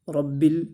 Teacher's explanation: را کے اوپر زبر ہے، اس کو موٹا پڑھیں گے، اس کو لمبا بھی نہیں کریں گے۔ با کو سختی سے پڑھیں گے اس لیے کہ اس کے اوپر تشدید ہے۔